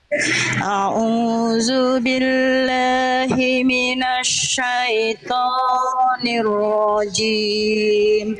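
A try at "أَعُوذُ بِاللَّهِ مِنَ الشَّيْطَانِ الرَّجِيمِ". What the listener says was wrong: Oke, huruf tebal-tebal vokal O jangan sampai dimonyongkan. Diangkat pangkal lidahnya. Diangkat pangkal lidahnya.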